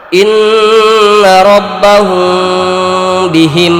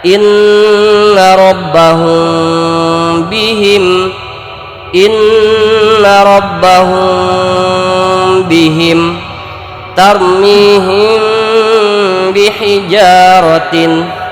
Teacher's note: Nah, untuk membedakan dengung ikhfa syafawi dan idgham mislain atau idgham mimi, maka ketika terjadi ikhfa, terjadi mim mati bertemu dengan ba, bibir kita tidak rapat sepenuhnya, jadi harus agak renggang bibir kita dalam pengucapan mimnya. Bibir kita agak renggang sekira setipis silet atau kertas, maka akan terjadi ikhfa.